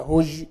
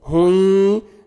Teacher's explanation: हुई, हुज नहीं पढ़ना, हुज गलत, हुई नोज में साउंड लेके जाएंगे, गुन्ना के साथ इदगाम करेंगे